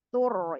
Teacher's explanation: Kalau dibaca wakof sama juga dia dibacanya tebal karena sebelumnya berharokat dhammah huruf sebelum huruf ro sukunnya.